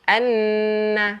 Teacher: Cuma bezanya, dua-dua dengung. Bezanya untuk nun yang bersabdu, kita angkatkan lidah kita ke langit sambil dengung.